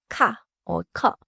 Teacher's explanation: 키읔 has a strong puff at the beginning when it makes a sound